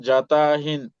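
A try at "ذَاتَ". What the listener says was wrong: এই যে জাতা যে বললেন ভাই, যা টান আছে না, এক আলিফ টান, জবরের বাম পাশে খালি আলিফ, এগুলো তো ভাই একবার ইজি, কঠিন না তো। না, ভাই আপনি না টান দিলেন না, না টান দেন, একটু খেয়াল করে ভাই, একটু আস্তে রিল্যাক্সে।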